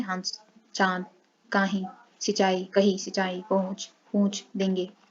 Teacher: इसका उच्चारण मुख और नाक दोनों से होता है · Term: अनुनासिक